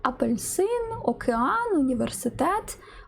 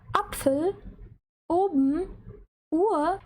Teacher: це коли голосна на початку слова вимовляється різко, ніби після короткої паузи або злегка з придихом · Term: твердий приступ